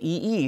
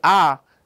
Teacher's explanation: the E the jaw is high but when I say ah the jaw is lower